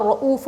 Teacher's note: را کے اوپر زبر ہے تو ہم را کو موٹا پڑھیں گے